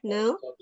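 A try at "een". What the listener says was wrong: Ein, bukan N, Ein.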